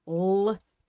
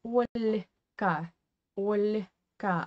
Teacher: We have hard one, L, like in the word stol or stool. And we have another one, very soft, that is palatalized, and it is kind of with a very short E, yeah?